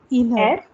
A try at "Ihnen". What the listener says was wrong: Ihnen. There is N-E-N, not N-E-R. So no inner.